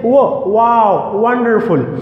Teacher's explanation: the wo sound is producing with the help of two lips only. Your lips rounds hard and you say wo, wow, wonderful.